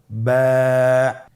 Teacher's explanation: এর মাখরাজ হলো আপনের দুই ঠোটের ভিজা অংশ থেকে আপনি উচ্চারণ করবেন